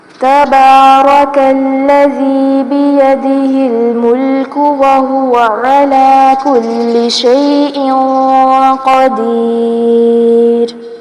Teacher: چھپائیں گے، اس قاعدے کو اخفا کہا جاتا ہے۔ شیء قدیر، قاف کو یہاں پر پر کیا جائے گا